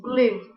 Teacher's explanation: The last set of vowels are the back vowels, such as oo in glue. The tongue is high, the lips are rounded.